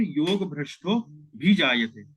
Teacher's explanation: अ जो है वो लुप्त हो जाता है और उसकी जगह ये अवग्रह आ जाता है।